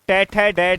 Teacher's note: ये मूर्धन्य हैं क्योंकि इनका उच्चारण स्थान मूर्धा है